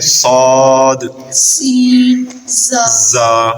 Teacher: زا سخت پڑھنا ہے ہم نے، سین سیٹی کے ساتھ اور صاد بھی سیٹی کے ساتھ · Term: سیٹی والے حروف